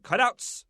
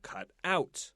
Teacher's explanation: compound word we have two words together so we want to stress the first syllable